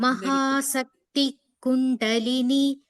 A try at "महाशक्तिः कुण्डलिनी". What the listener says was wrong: Mahasakti. There that that air or that half visarga should be heard. Mahasakti Kundalini.